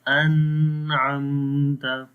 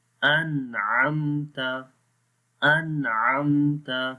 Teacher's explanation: نہیں پڑھیں گے انعمت تو یہ غلط ہو جائے گا، بلکہ آواز نون کی ظاہر کریں گے بغیر غننے کے